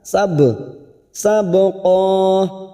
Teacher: Sabqa ba sukun qalqalah sugro. Karena mati asli di tengah kalimat kita pantulkan